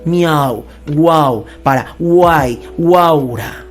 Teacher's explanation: los casos de concurrencia vocálica que se presentan en estas palabras llevan la mayor fuerza de voz en la vocal abierta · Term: vocal abierta tónica